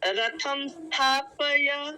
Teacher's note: स्थापय बोलना है, आपने प्य बोला है, प्य नहीं पय। आधा हो गया, आधा हो गया।